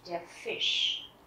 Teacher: âm SCH ở đây chúng ta sẽ đọc là âm sh, tức là sh mạnh